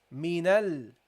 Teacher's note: Hamzatul Wasl, you drop it because it's in the middle of speech